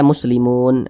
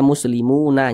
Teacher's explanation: Huruf nun kita sukunkan karena kita berhenti atau berwakaf pada huruf nun dan huruf nun tidak dibaca panjang.